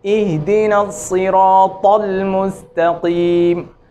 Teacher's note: مثلا اہدنا الصراط، طل نہیں، طل، اہدنا الصراط المستقیم. طا کو موٹا کریں مگر اس کی حرکت کو تبدیل نہ ہونے دیں